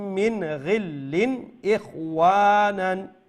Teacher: এখানে মিন নুন সাকিনের পরে ইনো গাইন হইছে গিল্লিন, আর এরপরে লামন নিচে তানবিনের পরে ইচ্ছে কিতা হামজা। তো দুইও জায়গাতেও ইজহার হইব, মানে নাকেদি সাউন্ড দাইতো না, লম্ব হইতো না।